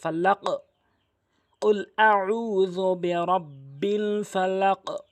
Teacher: কলকর 5টি, কফ, ত, বা, জিম, দাল, এই 5টি হরফের উপরে জজম হলে ধাক্কা দিতে হয় এবং ওয়াকফের সময় জজম না হলেও ধাক্কা দিতে হয়। ধাক্কাটা 2 দিকে, কফ ত উপরের দিকে এবং বা, জিম, দাল নিচের দিকে